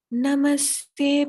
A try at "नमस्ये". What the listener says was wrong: Mataji, namasye, not namaste here, namasye.